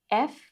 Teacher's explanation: F, we have a short E vowel sound at the beginning, then a F.